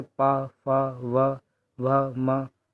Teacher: वे व्यंजन जिनका उच्चारण दोनों ओष्ठों से होता है उनको ओष्ठ व्यंजन कहते हैं। इन व्यंजनों के उच्चारण के समय दोनों ओष्ठ स्पर्श करते हैं तथा जीवा निष्क्रिय रहती है